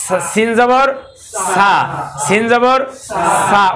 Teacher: সিন বলার সময় যেমন বাতাস বেরিয়েছে সিন, তাহলে সা বলার সময় বাতাস বেরোনো লাগবে।